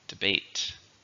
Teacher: 2, stresses on the second.